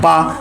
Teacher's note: पा बोलते हैं तो ओष्ठ हमारे आपस में टकराते हैं, तो यहाँ से पा वर्ग निकलता है।